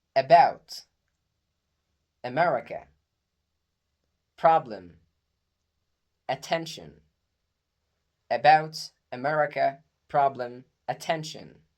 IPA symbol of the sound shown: ə